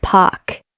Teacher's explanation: In many BRE accents, specifically received pronunciation or RP, that R sound is often dropped.